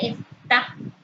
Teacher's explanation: Se pronuncia con mayor intensidad en su última sílaba, es una palabra aguda.